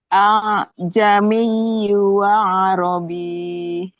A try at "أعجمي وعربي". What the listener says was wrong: Jangan dipanjangin itu ya tasdid. Ya tasdid kalau mati ditekan. Wa Arabi.